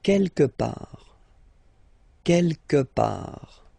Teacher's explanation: Don't pronounce the final T.